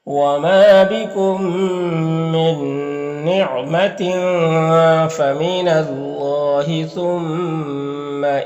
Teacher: یہاں پر اللہ کے لام سے پہلے نون کے اوپر زبر ہے تو اللہ کے لام کو پر پڑھیں گے · یہاں پر میم ساکن کے بعد میم ہے تو میم کو میم سے ملا کر غنہ کے ساتھ پڑھیں گے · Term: ادغام شفوی